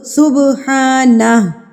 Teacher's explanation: تو یہاں پر ہم قلقلہ کریں گے، یعنی کہ اس کو ہم تھرتھراہٹ سے لفظ کو مار کے پڑھیں گے